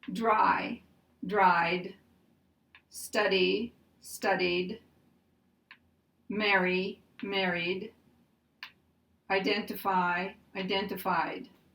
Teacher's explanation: They have a D sound because they end with a voiced sound. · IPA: [ d ]